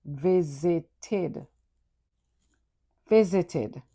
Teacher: Visit is a two-syllable word. But when you add ed, it becomes visited, three syllables. The ed sounds like id.